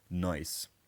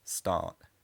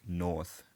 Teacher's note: A word like north will be pronounced like north, and so on. So rather than pronouncing a r in these words, the r gets absorbed into the vowel and changes it slightly. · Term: non-rhotic